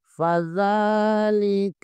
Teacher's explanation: ارأیت الذی یکذب بالدین، فذلک الذی یدع الیتیم، فا کے اوپر زبر ہے، زال کے اوپر بھی کھڑا زبر ہے، زال کے اوپر کھڑا زبر ہے، اسے کھینچیں گے